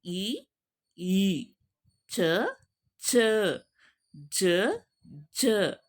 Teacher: ದವಡೆ ಮತ್ತು ನಾಲಿಗೆಯ ನೆರವಿನಿಂದ ಹುಟ್ಟುವ ವರ್ಣಗಳು ನೋಡಿ ತಾಲವ್ಯ ಅಂದ್ರೆ ದವಡೆ ಓಕೆನಾ ನಾಲಿಗೆ ಎರಡರ ಮಧ್ಯೆ ಹುಟ್ಟುತ್ತವೆ ಅವುಗಳ ಎರಡು